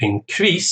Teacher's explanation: to increase, stress on the second syllable, is the verb.